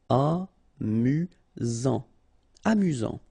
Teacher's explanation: Final T not pronounced. You get only one S here between the vowels, so it's really this Z sound.